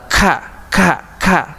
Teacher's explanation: Hembusan nafas ya, kayak sedikit ada udara dikeluarkan dari tenggorokan. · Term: huruf kaf